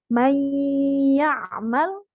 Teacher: tidak dibaca jelas tapi didengungkan suara nun sukun masuk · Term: Idgham Bighunnah